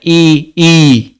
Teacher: जिन स्वर के उच्चारण में ओठ गोलाकार नहीं होते हुए आवृत्तमुखी स्वर कहलाते हैं